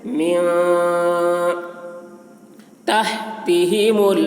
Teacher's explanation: نون میں اخفا ہو رہا ہے، یعنی نون کی آواز کو ناک میں لے جا کر چھپا رہے ہیں